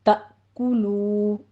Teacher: تا میں حمزہ ساکن ہے، جھٹکے کے ساتھ پڑھیں گے ، کاف کے اوپر ضمہ ہے، ہونٹ گول کر لیجئے، تأکلوا · طرح تا میں حمزہ ساکن ہے، جھٹکے کے ساتھ پڑھیں گے، کاف کے اوپر ضمہ ہے، ہونٹ گول کر لیجئے